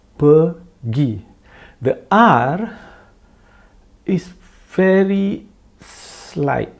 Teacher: The R is very slight. It is there, but you don't even hear it very well. But it must be there.